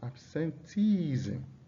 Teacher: You can see the stress is on the second to the last syllable.